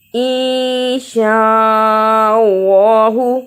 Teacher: وإنا نون مشدد ادا کیا، چھوٹی مد کو بھی ادا کیا. انشاء اللہ اخفا کیا، اللہ کو موٹا پڑھا